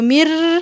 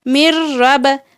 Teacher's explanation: نون کی ساؤنڈ بالکل بھی نہیں آنی چاہیے، ناک میں آواز بالکل بھی نہیں جانی چاہیے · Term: بغیر غنہ کے